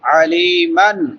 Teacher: کے بعد یائے مدہ ہے، میم کے اوپر نون تنوین ہے، نون تنوین کے بعد حروف حلقی میں سے ہا ہے تو یہاں پہ اظہار ہوگا